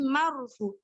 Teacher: Dibaca tebal ya, tafkhim. Itu ada ro tafkhim, ro yang dibaca tebal.